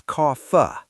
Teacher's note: And coffee, it's not coffee, it's cofa. The vowel is long and dark.